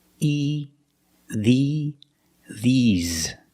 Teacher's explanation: But when I say these for something plural, these, I use the long e, like green beans. The mouth is more closed and you smile a little bit. E, these, and the s makes a z sound like zebra.